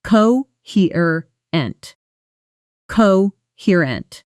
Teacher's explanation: Notice the stress falls heavily on the 2nd syllable, coherent.